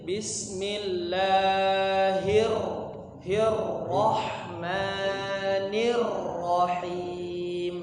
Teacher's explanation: hir sama nirnya agak ditahan. Ada tasdidnya